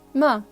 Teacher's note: the fourth tone it goes down and it's quite short